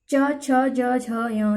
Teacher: ये तालु का स्पर्श करते हैं। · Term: चा वर्ग